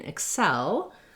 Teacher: the word cell it has the red tent vowel and then our first letter e doesn't have the red tent vowel instead it has a reduced vowel